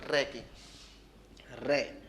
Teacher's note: इसको बोलते समय आपकी जो जीभ है ना थोड़ी वाइब्रेट करेगी। वाइब्रेट मतलब कंपन। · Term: प्रकंपित